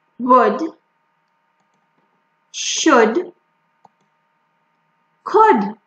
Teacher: L is not pronounced in some cases when it is before D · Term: silent L